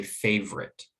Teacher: they drop that middle sound so it gets reduced from sort of an or to maybe a schwa like an er and then just a it's gone